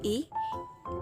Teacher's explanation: vokal tinggi depan tak bulat lalu vonom u vokal atas belakang bulat fonom e vokal belakang